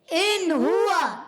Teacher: ہا جو ادا ہوتا ہے حلق کے نیچے والے حصے سے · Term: حرف حلقی